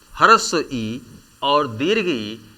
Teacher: स्वर ह्रस्व ई और दीर्घ ई इसका उच्चारण तालु से किया जाता है, इसलिए इसे तालव्य कहते हैं।